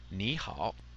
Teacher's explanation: two third tones together the first tone is said like a second tone